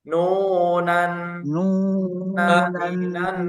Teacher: ditahan ya, ada dengung. Kira-kira 3 harokat. Nunan naninan coba lagi.